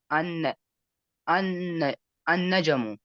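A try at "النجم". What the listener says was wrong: नज्म, शाबाश। जीम को साकित कर दो, खैर नज्म कर दो।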